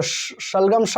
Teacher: जो श है वो तालु से बोला जाता है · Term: तालव्य श